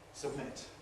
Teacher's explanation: Whenever we have a plosive followed by a nasal, we’ll probably get ‘nasal release’ like this. · We don't separate the lips. We just turn the B into an M. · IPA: [səbˈmɪt]